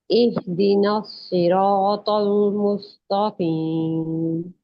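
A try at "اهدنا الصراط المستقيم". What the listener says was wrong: इहदिना इहदिना सिरातल तल तल तो को हैवी करना है, लाम को नहीं, ठीक है।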